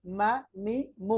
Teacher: মিম দুই ঠোঁটের শুকনা অংশ থেকে